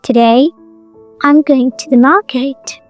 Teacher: Notice we don't stress I am to or s. The beat moves from today to going to market. That is the rhythm of English.